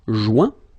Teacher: when you get this O-I-N combination of letters, you get the sound ouin